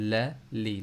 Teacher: ज़बान के किनारे से लाम की भी अदायगी होती है